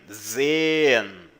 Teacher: E o S tem som de Z.